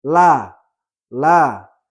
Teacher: Allah, lam di sini memiliki sifat lazimah berupa istifal, yaitu sifat yang mengharuskan dia dibaca dengan tipis